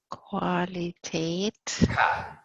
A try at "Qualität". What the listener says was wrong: Qualität. No qua in German. Qualität.